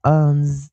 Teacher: 记得老师这个▁S▁是浊化的一个念法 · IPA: [ʌnz]